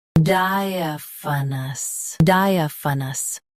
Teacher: Both US and UK have the same pronunciation of this word. Stress di. Keep a and f soft, then finish with nus.